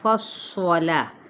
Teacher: فا باریک کرتے ہوئے ہمس بھی ہے، اور ساتھ ہی ہمس ویسے ہوتا ہے ساکن ہونے پر، ٹھیک ہے۔